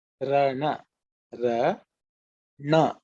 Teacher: the na where your tongue is bent up, more heavier na